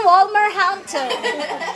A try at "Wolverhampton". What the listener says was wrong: Walmart talaga siya. Isipin mo si Wolverine.